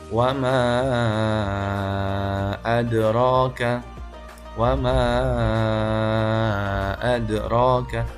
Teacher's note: memanjangkan mad jaiz munfasil itu adalah dengan 5 harokat, sama dengan mad wajib muttasil. Jadi membacanya wama adraka, wama adraka, panjangkan sama persis dengan mad wajib muttasil.